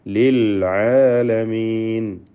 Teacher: യഥാർത്ഥത്തിൽ ആ ലാമിന് ഇൽഹാർ ഖമരി എന്ന ഇൽഹാർ നൽകിയാണ് ഉച്ചരിക്കുക.